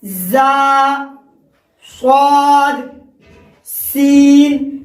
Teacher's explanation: زا سین صاد، زبان کی نوک اور ثنا سفلی کا کنارہ اور کچھ اتصال ثنا علیہ سے۔ میں نے آپ کو دانتوں کا نام یاد کرایا تھا کہ سامنے کے جو 4 دانت ہیں ان کو ثنا کہتے ہیں، اوپر والے کو ثنا علیہ کہتے ہیں اور نیچے والے کو ثنا سفلی۔